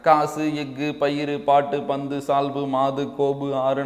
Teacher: தன் ஓசையில் குறைந்து ஒலிக்கும் உகரம் குற்றியல் உகரம் எனப்படும்